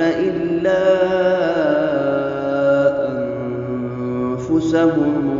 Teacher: الا میں جو یہ مد ہے، مد جائز منفصل ہے، اس کو 3 یا 4 حرکات کی مقدار لمبا کر کے پڑھیں گے۔ انفسہم میں اخفاء ہوگا، یعنی غنہ کریں گے، اس لیے کہ نون ساکن کے بعد حمزہ ہا عین حا غین خا میں سے کوئی حرف نہیں ہے۔